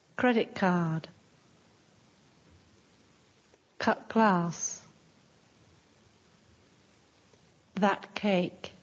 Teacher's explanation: Sometimes the t sounds more like k